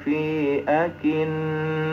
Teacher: Jadi mim bertasdid, nun bertasdid. Di situ kita jangan segan-segan untuk menahannya. Hukumnya dengung. Maka dilamakan.